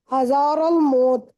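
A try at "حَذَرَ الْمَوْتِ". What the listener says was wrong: اچھا ہزار الموت نہیں، ہزار الموت ہے. الف نہیں، ہزار الموت نہیں، ہزارہ نہیں ہے بیٹا، ہزار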